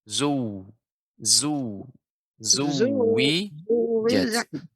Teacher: Wa Tidak izan panjang, Nek. Tapi ditasydidkan, ditekankan ke huruf langsung ke masuk huruf waw.